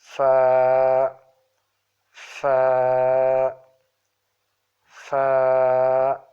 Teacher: inside of the lower lip with the tip of the top incisors